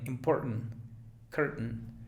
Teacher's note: La T es glotal